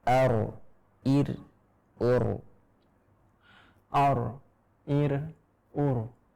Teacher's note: Ro sukun sebelumnya fathah maka juga tebal. Akan tetapi fathahnya tidak ikut tebal.